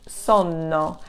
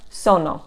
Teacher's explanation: the pronunciation is different because of the double consonant you're going to rest slightly longer on that sound